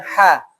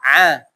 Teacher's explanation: Itu seperti huruf ha. Sama-sama mengalir tapi lebih mengalir huruf ha daripada huruf ain